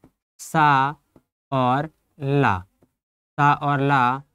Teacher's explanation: छोटा सा और ला ये कहाँ से उच्चारित हो रहे हैं? दंत से उच्चारित हो रहे हैं